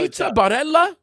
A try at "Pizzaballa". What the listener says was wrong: Balla. It sounds like pizza balla. There's no R. It's like pizza balls. Pizza balls. Balla.